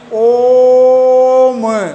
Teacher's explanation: संख्या मैंने बताया था इसको त्रय मात्रिक स्वर भी कहते हैं इनका उच्चारण दीर्घ स्वर से तिगुना समय लगता है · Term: प्लुत स्वर